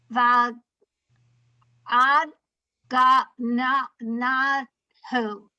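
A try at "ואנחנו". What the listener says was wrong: You've added a gimel. You added a g. So I'm going to say it and then look at va'anachnu.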